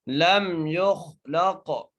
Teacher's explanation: لم یخ، لام کو قاف سے ملانا ہے، قاف کو موٹا کر کے پڑھنا ہے اور قاف پر قلقلہ بھی کرنا ہے